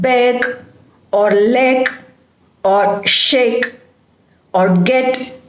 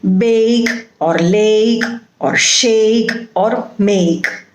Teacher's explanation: you begin with a and then you shift to the next one that is e sound